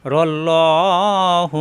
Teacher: আল্লাহ শব্দের ডানে জবর আসছে আল্লাহ হবে মোটা হবে